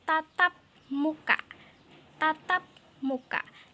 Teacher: bunyi P di situ sebenarnya merupakan bunyi hambat letup, tetapi ia tidak lagi dibunyikan sebagai hambat letup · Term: pelepasan